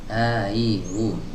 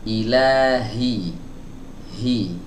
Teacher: Ilahi hi gitu. dikeluarkan dari tenggorokan ya bagian bawah atau di pita suara. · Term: huruf H-nya